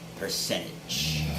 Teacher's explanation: you can nasalize the t